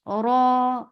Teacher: this ra is heavy. So you're lifting your tongue up, but you're not circling your lips.